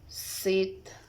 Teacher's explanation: Characteristic alveolars, fricative, and voiceless.